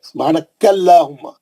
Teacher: सुब्हानकल्लाहुम्मा, क्योंकि अल्लाह के नाम से पहले कैफ पे जबर है, सुब्हानकल्लाहुम्मा, काफ पे जबर रहने से अल्लाह का नाम मोटा पड़े।